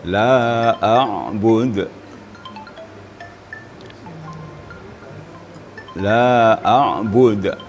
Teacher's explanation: kalau kita baca ain kira kita rasakan makhrajnya pada wastul halaq di tengah tenggorokan kita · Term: huruf ain